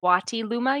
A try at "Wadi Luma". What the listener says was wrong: with a D.